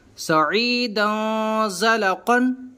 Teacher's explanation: تو ہم نے پڑھا تھا خلقن عظیم، لیکن یہاں پر تنوین کے بعد زا آ رہا ہے جو حروف اخفا میں سے ہے، لہٰذا ہم تنوین میں گننا کر کے پڑھیں گے